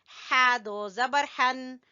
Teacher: हा को गले के दरमियान से निकालेंगे